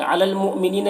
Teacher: हमज़ा साकिना, झटका लगेगा। नी में या मद्दा है, एक अलिफ के बराबर खींचेंगे।